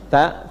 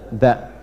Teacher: Seperti ta, tapi kalau ta itu ada udara keluarnya. Ta lebih banyak. Kalau dha ada sedikit tertahan.